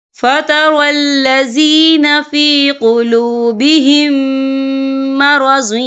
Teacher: یا دیکھیں فَتَرَى الَّذِينَ فِي قُلُوبِهِم، یہاں میم ساکن ہے، میم ساکن کے بعد جو ہے میم مشدد والا حروف آ رہا ہے تو یہاں پر ادغام شفوی ہوگا. ہم پچھلے میم کو اگلے میم میں مدغم کریں گے اور ہم یہاں غنہ بھی کریں گے